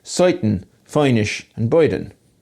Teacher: There's also a trace of the curl-coil merger in words like soiten, feinish and boyden.